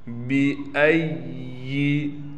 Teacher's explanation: بِأَيِّ، حمزہ کو یا سے ملائیں گے، یا پر تشدید ہونے کی وجہ سے تھوڑا ٹھہراؤ کریں گے۔